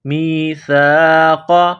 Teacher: سا کو باریک کرنا ہے، زبان باہر نکالیں گے سا کو پڑھتے وقت۔ میم یا زیر می، سا الف زبر سا، میثا، قاف زبر قا، قاف کو موٹا کرنا ہے، میثاق۔